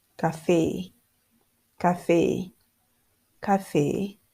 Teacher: I was putting so much stress at the last part of the word